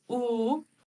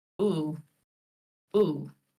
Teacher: That's a very rounded, and you're saying it kind of more towards the back ooh, whereas the standard way most people say it would be ooh, ooh.